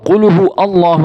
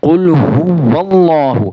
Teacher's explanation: واو کو اللہ، لفظ اللہ کے لام کے ساتھ ملا کے پڑھنا ہے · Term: واو کو ظاہر